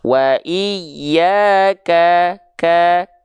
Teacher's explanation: huruf kaf itu kadar nafasnya hanya berupa percikan-percikan nafas saja